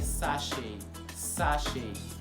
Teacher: the T is voiceless. So it's not being voiced out. That's why you don't hear it during articulation at all. Instead you hear sachet, sachet.